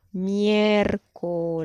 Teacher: la sucesión de vocales en este caso quedó en una misma sílaba